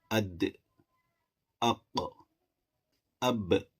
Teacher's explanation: دخولہ، اگر ان حروف پر جزم آ جائے گا تو پھر یہ حروف میں زیادہ قلقلہ ظاہر ہوگا، جیسے اد، اق، اب۔ تو یہ جو ایکو یا یہ جو باؤنس والی آواز آ رہی ہے تو اسی کو ہم قلقلہ کہتے ہیں